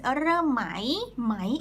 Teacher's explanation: if it's เริ่มไหม in rising tone it's a question